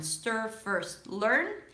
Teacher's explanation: sometimes the R does eat up the vowel before